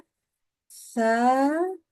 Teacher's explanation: Ujung lidahnya keluarkan. Nanti kita terasa yang kita kena itu bukan roksunnya, tetapi lidah. Kita berasa apa giginya terkena di atas lidah.